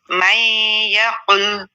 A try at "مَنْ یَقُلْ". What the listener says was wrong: مئی نہیں کہنا، ٹھیک ہے. من یقل.